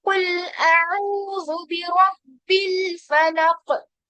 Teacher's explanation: कॉफ पे कलकला भी करना है, साथ में उसको मोटा भी करना है